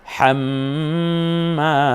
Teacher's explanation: যেহেতু জবরের পরে খালি এলিফ আছে, যেন এক আলিফ টেনে বলি